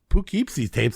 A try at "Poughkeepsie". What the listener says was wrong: really emphasizing the "poo" aspect.